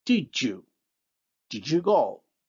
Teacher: And look at how the voiced alveolar stop, d, becomes the voiced palatal alveolar affricate, j